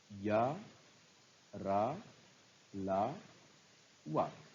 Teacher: अंतस्थ व्यंजन है या, रा, ला, वा। इसमें से या का उच्चारण स्थान तालु, रा का मूर्धा, ला का दंत और वा का दंतोष्ठ